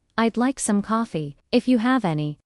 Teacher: Fall rise intonation. Polite requests, doubt, or continuation.